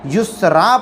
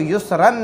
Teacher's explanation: دو زبر پر وقف کرنا ہو تو ایک زبر کے ساتھ الف پڑھا جائے گا